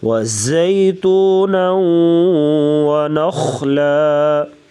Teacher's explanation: زا کو سیٹی جیسے آواز سختی سے پڑھا جائے گا